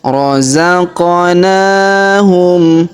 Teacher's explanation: Perhatikan huruf qaf berharokat sukun ya, huruf qaf berharokat sukun, maka kita pantulkan ya atau kita qalqalahkan.